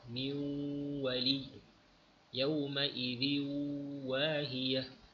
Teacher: mulut terus muncung untuk masuk pada makhraj waw